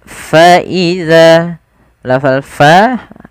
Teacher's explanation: alirkan nafasnya karena dia salah satu sifat huruf fa, yaitu sifat hamas, yang dimana hamas ini mengalir nafas kita